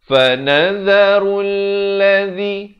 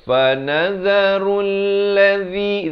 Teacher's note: zi di hujung lidah, dua harakat.